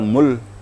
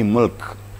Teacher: Terdengar dua-duanya. Jangan hanya sekedar mematikan lam saja, kaf tidak terdengar atau sebaliknya. Tetapi harus kedua-duanya terdengar walaupun sedikit. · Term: dua sakin